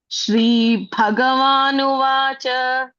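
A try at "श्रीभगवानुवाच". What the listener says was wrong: Prasvam. Don't elongate. Prasvam. That is Prasvam. Uvacha. Prasva ending. Don't elongate.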